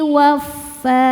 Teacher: Cara bacanya panjangnya dua harakat saja. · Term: mad thobi'i